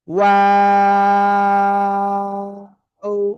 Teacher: তিন আলিফ টান হবে